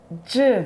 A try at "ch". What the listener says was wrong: Nein, nicht J, sondern Ch. Ch. Nein! machst wie so ein J.